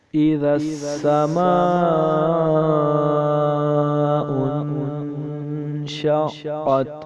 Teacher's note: اذا السماء انشقت، حمزہ کے نیچے زیر ہے، را سین کے ساتھ ملے گا، سین کے اوپر تشدید ہے اس لیے ہم سین کو 2 بار پڑھیں گے۔ آگے سین پڑھ کے اور میم کے اوپر مد ہے، اسے ہم مد متصل کہیں گے کیونکہ حروف مدہ کے بعد حمزہ اسی کلمے میں ہے، تو یہ مد متصل ہوئی۔ · حروف مدہ کے بعد حمزہ اسی کلمے میں ہے، تو یہ مد متصل ہوئی۔ اسے ہم 3 یا 4 الف کی مقدار لمبا کریں گے